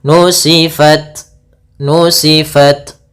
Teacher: Ta itu adalah syiddah. Syiddah itu tertahannya suara. Kemudian hames mengalirnya suara.